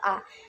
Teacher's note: vokal yang berbentuk dengan posisi lidah serendah mungkin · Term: vokal terbuka